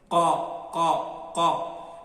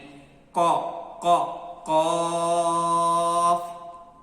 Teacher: The exit point of Qaf is first point of our throat. The starting point of our throat.